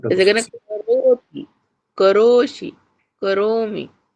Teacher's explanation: केवल रो ही दीर्घ है का और ती तो ह्रस्व है